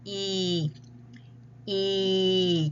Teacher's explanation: tongue is high, mouth is closed. Okay? And uh sorry, and it's toward the tongue is high and towards the front and the mouth is closed.